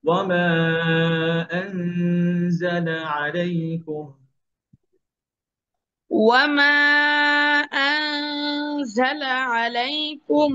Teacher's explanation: নুন যেন আপনার ক্লিয়ার না হয়, প্রকাশ না পায়, নুন গোপন থাকবে।